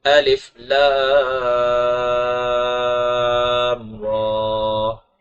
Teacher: یعنی الف کو معروف پڑھنا ہے، لام کو تین الف کے برابر کھینچنا ہے، میم ساکن کے اندر غنہ نہیں کرنا، را کو موٹا پڑھنا ہے اور ایک الف کے برابر کھینچ کر کے پڑھنا ہے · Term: مد لازم